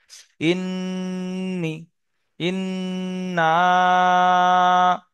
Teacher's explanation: নুনের উপরে তাসদিদ, গুন্না ওয়াজিব